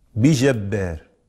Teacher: هذا الألف اعترته الإمالة وقرئ بالتقليل لوقوعه قبل راء متطرفة مكسورة